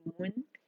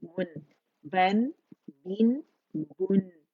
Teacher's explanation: दम्मा के लिए मखरज पकड़ के फिर गोलाई देनी है, और जब नून साकिन पे आएंगे गोलाई खत्म हो जाएगी